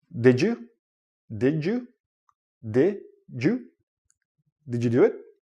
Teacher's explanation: when you're connecting words and you have a D and a Y together, it becomes like a J sound.